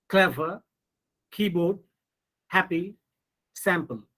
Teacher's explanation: you are giving stress on first syllable not on the second syllable